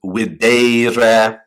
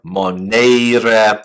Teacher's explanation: A second conjugation verb will have a long E before the re ending. So in this case, videre, to see, or monere, which means to warn.